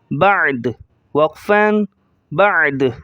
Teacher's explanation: باعین زبر باع، دال پیش دو، بعدو، وقفاً بعد، وقفاً بعد۔ دال کی پیش کو ظاہر نہیں کریں گے جب ہم رکیں گے، اسٹاپ کریں گے، تو صرف بعد اس طرح پڑھیں گے۔